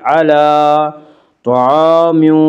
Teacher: طا کو پر پڑھیں گے، طا حروف مستعلیہ میں سے ہے